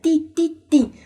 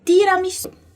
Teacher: a pontinha da língua vai encostar no céu da boca e vai também encostar ali na bordinha ali do dente, na parte interna. Então, é ti, ok?